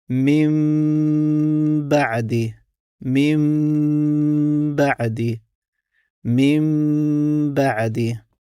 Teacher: tada se umjesto n izgovara slovo m kroz nos i uz blagi pritisak na usnama